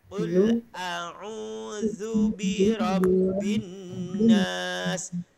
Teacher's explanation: zu za makhrajnya berada di antara dua gigi depan